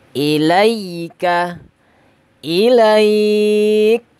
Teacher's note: Kalau dia diwakafkan maka sifatan yang ala tertib, syiddahnya didahulukan baru hamasnya.